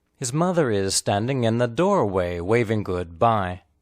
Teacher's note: The important content word is mother. The unstressed words are his and is. The words mother and is are linked together, but not contracted.